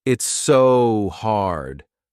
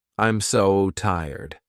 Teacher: one thing native speakers do with the word so is elongate it to emphasize how hard something is, or whatever the adjective is.